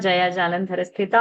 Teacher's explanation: jalandhara, that dha is a mahaprana. And sthita tha is a mahaprana. More force.